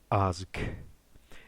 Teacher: An example of a word with this rune is the word for war, being azk. You clearly hear a breathy H sound at the end when you say it.